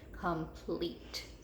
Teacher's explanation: I hear that long e in the second syllable that's where that e is accented second syllable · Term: accented syllable